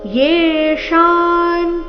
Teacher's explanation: ಯೇ ದೀರ್ಘ ಮೂರ್ಧನ್ಯ ಶಕಾರದೊಂದಿಗೆ ದೀರ್ಘ